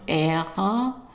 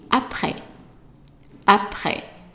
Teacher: the R, you can pronounce it as an R, which is like the gargling sound